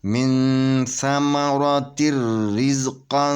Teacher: یہاں پہ اخفا ہوگا، اخفا حقیقی مال غنہ، تو 2 حرکت کے برابر یہاں پہ غنہ کریں گے